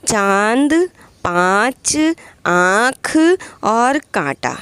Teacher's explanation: इसका उच्चारण नाक और गले दोनों से होता है। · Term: अनुनासिक